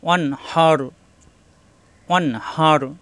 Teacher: ও জবর অ মিলবে নুনের সাথে, এই আলিফ খালি পড়া লাগবে না, অন। এই নুন সাকিনের পরে আসছে হা, এখানে নুন সাকিন স্পষ্ট হবে, কোনো গুণ্য হবে না।